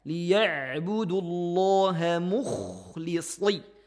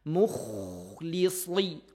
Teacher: Kha diberikan suara ngoroknya dan sedikit mencucu. Mukhlisi, sli tebalkan.